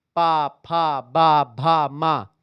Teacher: ओष्ठ पर जाकर ओठ आपस में टच करते हैं